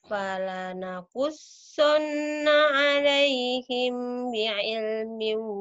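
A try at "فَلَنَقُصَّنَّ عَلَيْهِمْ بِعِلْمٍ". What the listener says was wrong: Nah, himnya ditahan.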